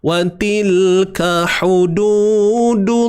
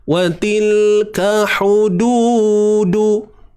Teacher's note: Ha pedas kena sempitkan tengah kerongkong kita.